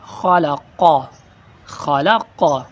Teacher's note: خا کو بھی پر کرنا ہے اور قاف کو بھی پر کرنا ہے